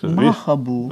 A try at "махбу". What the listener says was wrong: А не читается, получается. Махбу.